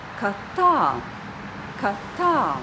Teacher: And the second part of the sentence is ka tā. Ka tā. The second word is stressed.